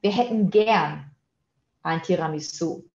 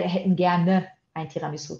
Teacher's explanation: Tá faltando o e nesse gerne, né? Porque no dia a dia, assim, o E do gerne é engolido.